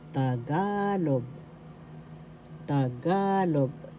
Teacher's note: The second syllable has the accent.